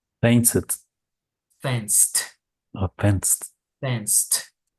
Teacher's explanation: The last sound is S, so it's an unvoiced consonant. It sounds like a T.